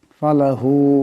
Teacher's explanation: এখানে হার উপর মদ আছে এটাকে অবশ্য লম্বা করে পড়তে হবে